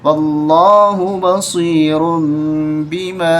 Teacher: ایک پیش کے ساتھ، تنوین میں سے بدل دیا جاتا ہے، تنوین کو بدل دیا جاتا ہے میم کے ساتھ، تو را میم پیش رم پڑھیں گے